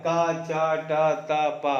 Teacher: तो अल्प प्राण ध्वनियां ये उच्चारण में कम हवा निकलती है